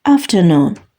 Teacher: sözdəki qoşa o hərfi burda uzun u kimi tələffüz olunur